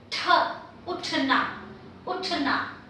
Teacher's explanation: this is the retroflex aspirated